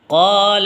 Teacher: قالا میں قا کو کھینچیں گے کیونکہ الف مدہ آیا ہوا ہے